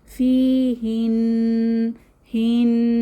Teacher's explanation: নাক থেকে এই যে গুনগুন আওয়াজ বের হবে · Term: গুন্না